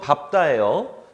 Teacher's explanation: 비읍 받침 뒤에 예사소리가 된소리로 바뀐다